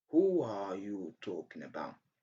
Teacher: Here, between the sound U and R, we have the linking W.